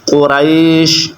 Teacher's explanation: اب یہ ادھر کون سی غلطی کرتے ہیں کہ قاف موٹا ہے دو نقطوں والا، تو یہ باریک کاف پڑھ بیٹھتے ہیں، تو جس کی وجہ سے یہ معنی چینج ہو جاتا ہے، تو باریک کاف نہیں پڑھنا بلکہ آپ نے موٹا کاف پڑھنا ہے